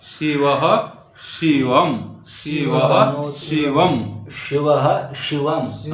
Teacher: तनोतु नः शी, तालवे सकार है, सकार तालु से लेना पड़ेगा